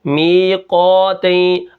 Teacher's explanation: قاف کو ہم موٹا کریں گے اور اس کے ساتھ یہ الف بھی موٹا ہوگا